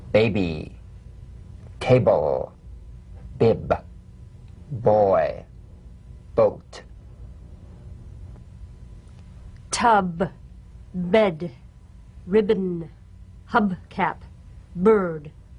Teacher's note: Voiced, labial stop or plosive consonant. A drumbeat staccato consonant. Close the lips together gently and let them spring apart lightly.